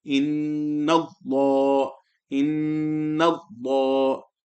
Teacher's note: Before the lam of Allah, if a fatha or a dhamma appears, before the lam of Allah, if a fatha or a dhamma appears, then the lam of Allah will be recited full mouth